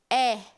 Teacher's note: a língua já desceu um pouco mais na frente, ou seja, ela já é considerada uma vogal um pouco mais central, porque o a sua forma, o seu posicionamento de língua mais anterior já sofreu um recuo, então ela já foi mais pro centro da cavidade oral.